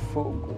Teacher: as plosivas intervocálicas, ou seja, entre duas vocais, que eram surdas, viraram sonoras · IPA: k > g